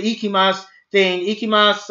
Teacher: there's a U there, but you don't say Ikimasu. You just say Ikimas. You don't add the U at the end.